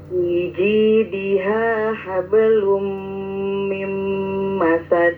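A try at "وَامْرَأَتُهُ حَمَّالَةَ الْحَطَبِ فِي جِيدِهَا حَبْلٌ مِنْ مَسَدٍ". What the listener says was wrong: Heeh. Bagus. Terus.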